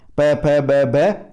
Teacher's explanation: प वर्ग, पांचवा वर्ग है और पांचवा हमारा उच्चारण स्थान कौन सा है? ओष्ठ है।